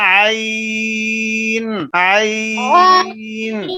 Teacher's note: اگر حروف لین ہو اور وقف کریں تو یہاں مد پیدا ہو جائے گی عارضی طور پر. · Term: مد عارضی